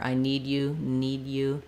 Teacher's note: that D doesn't really burst out but it doesn't have to stop either